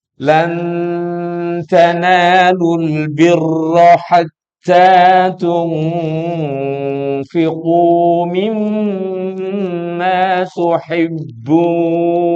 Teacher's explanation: Lan, harus ditahan begitu, nggak boleh lan tanal, nggak boleh, harus lan tanalul birra hatta tahan lagi, nun mati ketemu ta ikhfa, nun mati ketemu fa ikhfa